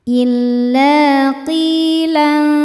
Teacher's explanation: Illa qi mad tabi'i dhahiri karena ada ya sukun sebelumnya berharokat kasrah. Cara bacanya panjang 2 harokat.